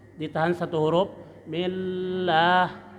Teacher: lam lidahnya naik, ditahan karena bertasdid, ditahan satu huruf millah ya, tapi tidak lama-lama karena lam bukan huruf dengung.